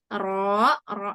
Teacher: jangan ikut bibirnya jangan ikut serta Ya seperti ta kemudian ro ro yang sukun itu kan tidak melibatkan bibir ya jadi bibirnya lebih tenang